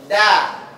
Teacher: yang diperhatikan adalah posisi lidahnya supaya tepat penyebutannya. Huruf da itu posisi ujung lidah di antara gusi atas dengan gigi atas.